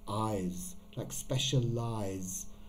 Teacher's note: to me, it doesn't sound like an S sound. It sounds like a Z sound.